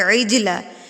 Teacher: ثُمَّ اتَّخَذْتُمُ الْعِجْلَ مِن بَعْدِهِ، اب یہاں پر دیکھیے عجلہ، جیم بھی حروف قلقلہ میں سے ہے تو آپ جیم کو بھی ہلا کر پڑھیں گے